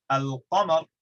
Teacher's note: Because the word for moon, al-qamar, begins with a qaf, which is pronounced way far away from the lam in the back of the throat, and so is far away enough to be distinct, to not merge in with the lam, and so they've called it the moon letters.